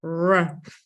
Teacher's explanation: And I think the main difference with English English and American English is that with American English, strong American English accent, the tongue, the body of the tongue is much more in the back of our oral cavity.